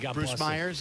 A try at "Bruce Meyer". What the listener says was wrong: Bruce Meyer, no S.